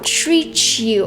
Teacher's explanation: She connected treat and you. Treat you. And she added this quick ch sound. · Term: connected speech